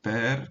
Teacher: ele tem um R ele tá fechada a sílaba então é longa por posição ainda que o e seja breve por natureza seja breve mas a sílaba é longa por posição então per